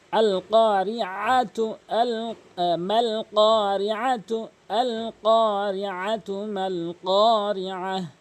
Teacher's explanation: অবশ্যই আইনটি হলকের মাঝখান থেকে উচ্চারণ করবেন যেন হামজা না উচ্চারণ হয়।